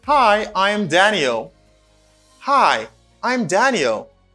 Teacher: falling intonation because I lower my voice at the end of the sentence